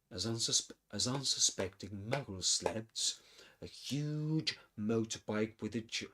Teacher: the narration decreases a bit in terms of speed because of the emphasis the narrator puts on huge